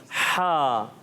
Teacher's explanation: ہا حلق کے درمیان والے حصے سے ادا ہوتا ہے